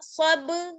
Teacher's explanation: وتواصوا, وتواصوا بالصبر, با کو صاد سے ملائیں گے, بالصاد, با زبر صب, با پہ قلقلہ ہوگا, صب, را زری, صبری, بالصبر.